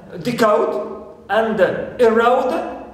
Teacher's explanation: in case we have au plus consonant, like in decode and erode, here we stress the second syllable